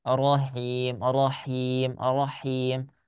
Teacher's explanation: Ketika ibu mengucapkan ro-nya monyong.